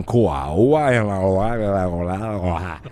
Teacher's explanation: en Cuba no se habla la consonante